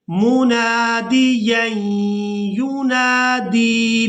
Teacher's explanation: میم پیش منہ، نون الف زبر نا، مونا، دال زیر دی، منادی، یا دو زبر ییں، منادییں، یا پیش یو، نون الف زبر نا، یونا، دال یا زیر دی، یونادی. یہاں پر دال کو یا مدہ کی وجہ سے کھینچ کر ادا کریں گے